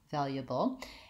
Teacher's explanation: U often gets reduced to ya with a schwa. So still I would have my stressed val, and I would do valuable, and I would leave out this schwa and go right from the ya to the bull, valuable.